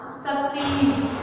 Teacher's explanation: दोनों ही दीर्घ स्वर हैं, दोनों दीर्घ स्वर आपस में मिलकर एक दीर्घ स्वर का निर्माण करते हैं, तो ये बन गया अपना सतीश।